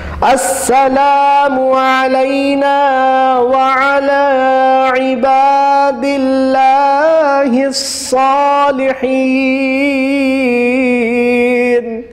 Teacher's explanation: السلام میں الف مدہ کو کھینچنا، علینا میں الف مدہ کو کھینچنا، وعلا میں کھڑا زبر کو کھینچنا، عباد اللہ میں الف مدہ اور کھڑا زبر دو کھینچنے والے ہیں